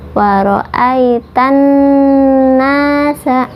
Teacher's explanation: Di atas huruf nun ada tasydid, hukumnya gunnah, tahan 2 harokat.